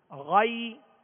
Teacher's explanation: غیر یہاں غائن کو پر پڑھیں گے، حروف مستعلیہ میں سے ہے. آگے یا لین ہے، غی اس کو کھینچیں گے نہیں بلکہ نرمی کے ساتھ معروف پڑھیں گے